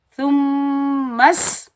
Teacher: मीम मुशद्दिद के साथ मिलाएंगे और यहाँ एक अलिफ की मिकदार गुन्ना करेंगे और मीम मुशद्दिद को हम सीन के साथ मिलाएंगे क्योंकि सीन साकिन है, तो हम मीम को सीन के साथ मिलाएंगे। · सीन सख्ती और सीटी वाला हरूफ है